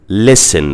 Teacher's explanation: the letter T after the S isn't pronounced. So it's silent, it's not said, it's just written. So in this word, listen, we have 6 letters, but we have only 5 sounds.